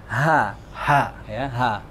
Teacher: Ha yang di bawah, ya, yang di pangkal tenggorokan. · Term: ha gede